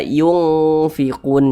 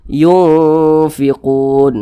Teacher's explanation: kadar samar dan kadar dengungnya itu seimbang.